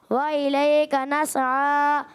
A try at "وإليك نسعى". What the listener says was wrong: وَإِلَيْكَ نَسْعَى، سین کو ہلائیں گے نہیں، وَإِلَيْكَ نَسْعَى،